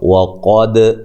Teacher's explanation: قاف کو موٹا ادا کرنا ہے، دال پہ قلقلہ ہے